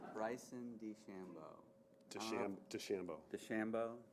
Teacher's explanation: Accents on the second syllable.